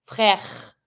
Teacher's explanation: The R is kind of hard to pronounce in French. Keep in mind that it has to go from the throat. It's not the R that we say in English like R.